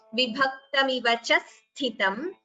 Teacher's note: So after cha there is a dvitva, double sound.